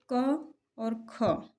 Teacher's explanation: जैसे क और ख ये क्या है, अघोष वर्ण हैं। इनके उच्चारण के दौरान स्वर तंत्रिकाएं जो हैं वो कम झंकृत होती हैं